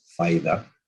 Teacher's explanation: Vocalization is associated with the Cibao, in which a tap or a lateral is converted into a high front vowel